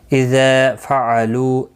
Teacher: اذا ذا الف مدہ ہے، لو واو مدہ ہے، دونوں کو ایک ایک الف کی مقدار کے برابر کھینچ کر پڑھیں گے، باقی کسی بھی حرکت والے حرف کو کھینچنا نہیں.